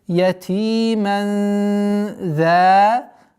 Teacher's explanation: Ихфа, сокрытие в размере 2 огласовок, мягкое сокрытие.